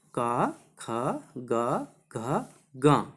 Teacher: और उसके पश्चात हा और विसर्ग, विसर्ग या नाम कंठा। इन वर्णों का उच्चारण स्थान क्या होता है, कंठ से बोले जाने वाले वर्ण होते हैं।